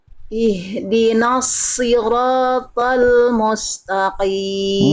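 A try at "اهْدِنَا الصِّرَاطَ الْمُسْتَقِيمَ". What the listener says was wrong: Mu-nya jelaskan mus dan mus mustaqim. Sekali lagi.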